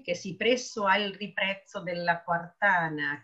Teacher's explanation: sentite proprio la allitterazione sulla vibrante, che sembra di vibrare proprio